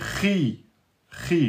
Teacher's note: Parce que quand il est avec kasra, il est moins emphatique.